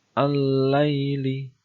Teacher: al-laili mad layyin sebab ada huruf ya mati didahului dengan harokat fathah